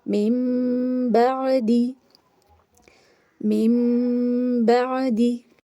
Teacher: یہاں پر بھی نون ساکن کے اوپر چھوٹا سا میم بنا ہوا ہے اور آگے حرف اقلاب یعنی با آ رہا ہے، تو نون ساکن کو میم سے بدل کر پڑھیں گے، میم کی زیر کو ڈائریکٹ میم سے ملائیں گے اور ساتھ میں غنہ کریں گے